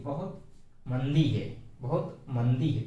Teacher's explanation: आज ठीक है, बहुत मंदी है, बहुत मंदी है। तो माँ जो है इसको हल्के से बोलेंगे, धीरे से बोलेंगे, और दी को थोड़ा सा चढ़ा करके, थोड़ा सा खींच करके बोलेंगे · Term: शब्द बलाघात